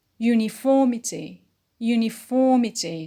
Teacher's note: So the stress is on for on the antepenult.